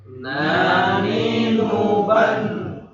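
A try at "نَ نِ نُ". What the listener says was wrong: Jadi jangan ban. Jadi lidah itu nggak nempel, harusnya nyentuh itu tadi langit-langit. Jadi en. In, un. Nah, jadi nempel. Jangan turun. Ya, jangan ban.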